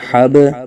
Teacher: با ساکن پر قلقلہ خوب ظاہر کریں گے